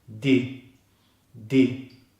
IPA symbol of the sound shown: i